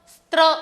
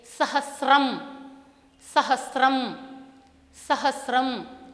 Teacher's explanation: कदाचित मातृभाषा के प्रभाव से यहाँ सहस्त्र स्त्र इस तरह का उच्चारण सुनाई देता है, किंतु संस्कृत में शुद्ध उच्चारण के लिए सहस्रम, सहस्रम, सहस्रम इस तरह से अभ्यास करना होगा।